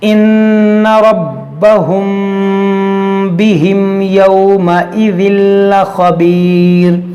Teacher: میم ساکن کے بعد با ہے تو یہاں پر اخفاء شفوی ہوگا، یعنی غنہ کریں گے · یہاں پر دیکھیں پھر میم ساکن ہے، لیکن میم ساکن کے بعد نہ میم ہے نہ با ہے، تو یہاں پر اظہار شفوی ہوگا